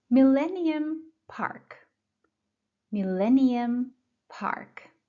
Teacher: The stress is on the second syllable, millennium.